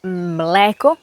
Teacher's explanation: L is a semi-vowel. It's as if it was a vowel.